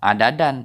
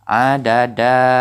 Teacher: Adada ini mad iwad karena sudah kita ganti, kita iwadkan, kita gantikan bunyi bacaan tanwin ini ke bunyi bacaan mad. Jadi tidak adadan tetapi adada. Ini kita panjang 2 harakat.